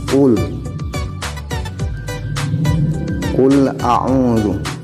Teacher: qaf ini letak makharijul huruf dari qaf adalah ujung tenggorokan bagian dalam